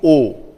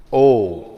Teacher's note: Now coming to O. It's rounded.